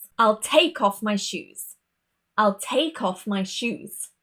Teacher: Here the verb is stressed and nothing else in the sentence